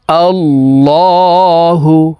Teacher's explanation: এই লামকে ল অর্থাৎ মোটা করিয়া পড়িতে হয়